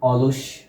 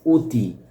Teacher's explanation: অর উচ্চারণ এখানে ও এর মত হচ্ছে।